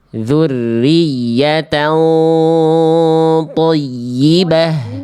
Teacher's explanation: dengan cara angkat pangkal lidahnya ketika ikhfa biar nuansa tebalnya terasa